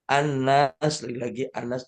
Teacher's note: Kemudian nunnya tasdid namanya. Cara bacanya dengan ghunah musyaddadah. Ghunah penuh atau ghunah tam ya.